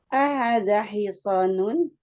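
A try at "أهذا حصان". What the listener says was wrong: Hanya panjang. Kadang kita terlupa.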